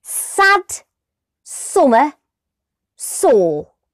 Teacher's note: we force the air out but use the tip of the tongue to create a smaller channel for the air to go through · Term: S sound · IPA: /s/